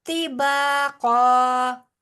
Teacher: با موٹا نہیں ہوگا، طا موٹا ہوگا اور قاف موٹا ہوگا